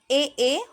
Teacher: अब आते हैं कंठ तालु पर, तो जिसमें कंठ और तालु, ठीक है, उन दोनों का उपयोग हो